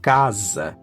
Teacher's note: And when S appears between two vocals, it gains the sound of Z. So, like in casa, that's house.